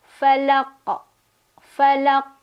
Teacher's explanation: Nah, dia pantulannya langsung keluar, kemudian bunyi pantulannya itu lebih ke O ya. Karena qaf itu kan huruf yang tebal, jadi pangkal lidah seperti biasa terangkat. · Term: qalqalah kubra